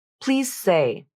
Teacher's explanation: So the phrase, please say, is pronounced like, please say. with voicing on maybe the first 25% of the Z consonant, then the last 75% is voiceless and becomes the S consonant. So, in summary, you have a longer E vowel and a little bit of voicing at the beginning of Z. · So, in summary, you have a longer E vowel and a little bit of voicing at the beginning of Z. Then the voicing drops out and the Z becomes S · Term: voicing assimilation